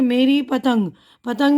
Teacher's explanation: पतंग में हल्की सी नाक से आवाज़ आ रही है ना यहाँ, तो इसी को कहते हैं नून गुन्ना।